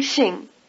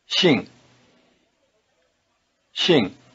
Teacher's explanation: Shing is pronounced with the tongue farther forward and with the lips spread